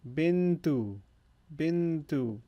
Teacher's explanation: I'm actually emphasizing the noon a little more because here we have the nasal extra second noon because it follows or it precedes a letter, which allows for or tells us we need to prolong the noon a little bit more. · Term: gunna